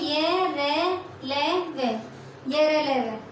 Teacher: पूरी तरह से जीभ मुख के किसी भी भाग को नहीं छूती अंतस्थ व्यंजन के उच्चारण में। इन्हें स्वर व व्यंजन के मध्य का भाग भी बोलते हैं।